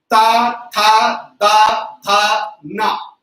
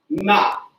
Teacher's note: ना बोलते ही जीभ थोड़ी पीछे बढ़ जाती है।